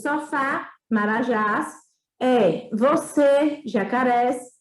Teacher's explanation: São as palavras cuja sílaba tônica é a última. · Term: oxítonas